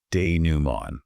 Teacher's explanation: The T at the end is completely silent.